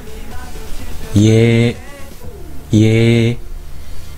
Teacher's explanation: Y▁声音和▁A▁联合成为一个声音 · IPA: /jɛ/